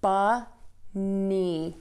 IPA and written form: bʌni (Bunny)